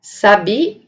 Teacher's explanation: Agora, se eu mudar o acento, a posição do acento fonológico para essa sílaba, eu vou ter a palavra sabia, verbo saber, né, no pretérito. Agora, se eu mudar o acento fonológico para a última sílaba, nós teremos a palavra sabia, o pássaro